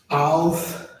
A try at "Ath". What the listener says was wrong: No, almost. You're adding the Al, the L sound. That's not in there, but the Atha. So you almost had it right. Well, Ath.